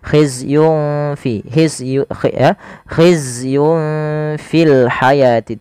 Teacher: Maka samarkan langsung nunnya kepada huruf Fanya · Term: bacaan Ikhfa